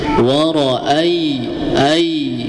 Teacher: ada huruf ya mati sebelumnya ada huruf yang berharakat fathah ya. Jadi bacaannya lunak. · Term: bacaan lin